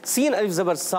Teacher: सीन की अदायगी बारीक हरूफ में से है, सिटी के साथ अदा करते हैं